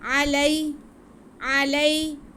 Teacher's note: अब या साकिन से पहले ज़बर हो तो या लीन होती है, इसलिए हमने लाम को बिल्कुल नहीं खींचना, क्योंकि इसके बाद लीन हरफ आ रहा है।